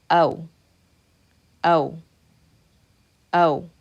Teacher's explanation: the sound that you're going to get is the fatha sound stopping on the W sound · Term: diphthong sound